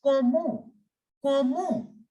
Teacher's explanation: The T in the end will remain completely silent.